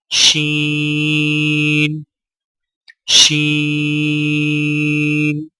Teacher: باریک اور پھیلتی ہوئی آواز میں پڑھیں